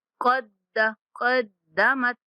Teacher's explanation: قاف کو موٹا اور دال مشدد